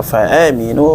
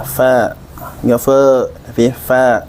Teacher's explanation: fa-nya dialirkan nafasnya. Karena huruf fa itu memiliki sifat rikhwah, kemudian dia memiliki sifat hamas, ya. Fa, dia itu huruf istifal, jadi pengucapannya harus ringan.